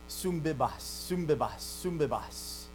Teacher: So they're both nasals, so it isn't a radical change to a totally different thing, right? It's still a nasal, but it becomes a labial nasal because the beta, b, it's a bilabial. So it's easier to say, sumbibas, sumbibas, sumbibas.